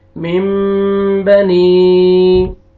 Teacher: یہاں پہ دیکھیں نون ساکن کے بعد با آ رہا ہے، نون کو اپنے میم میں چینج کرنا ہے